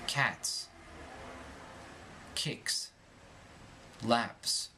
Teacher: The primary means of expressing a plural is the addition of the letter S. When S follows an unvoiced consonant, it retains its S sound.